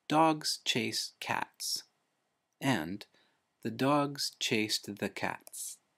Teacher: english is said to be a stress-timed language where in the sentences dogs chase cats and the dogs chased the cats takes about the same time to say